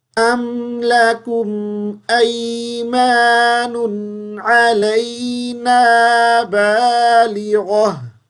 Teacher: وقف کریں گے تو گول تا کو ساکن کر دیں گے اور ہا پڑھ دیں گے